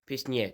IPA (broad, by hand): pɨʂ.ɲɛʨ